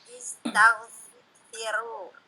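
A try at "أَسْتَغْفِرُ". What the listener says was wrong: Nah, astaghfiru ya. Dia hamzahnya hamzah qata, bukan hamzah wasl. Di astaghfiru.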